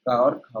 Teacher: अगला देखिए, निम्नलिखित में से कंठ ध्वनियां कौन सी हैं जो कंठ से बोली जाती हैं? तो कंठ से का वर्ग बोला जाता है